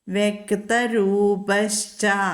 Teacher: വ്യക്തരൂപഃ ച, അവിടെ വിസർഗത്തിന് ശേഷം ച വന്നതുകൊണ്ട് ശ ഉച്ചരിക്കും